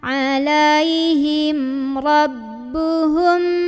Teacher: Ini fadamdama ala'a, dari tengah tenggorokan, alaihim, mim ketemu ro, jelas lagi ya, jangan ditahan